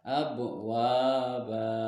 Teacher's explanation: huruf ba berharokat fathah tanwin dan di waqaf cara membacanya tanwin dihilangkan dan dipanjangkan dua harokat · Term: ma'iwad